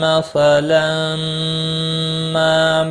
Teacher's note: تنوین کے بعد حروف یرملون کا میم آیا، ادغام باغنہ ہوگا، الف مدہ بھی ہے، ایک الف کے برابر کھینچ کر بھی پڑھیں گے۔